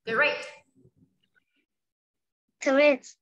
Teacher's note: Âm đờ cuối nhưng mà mình đọc không rõ âm đờ đâu nha. Mình đọc lướt thôi, rất là nhanh. Nhưng mà cố gắng bật âm cuối cho cô nha.